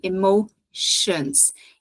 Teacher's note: esse e vai ter bem um som de i